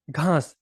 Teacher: तो घास में हम घा पर ज्यादा बल दे रहे हैं और स पर कम। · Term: वर्ण बलाघात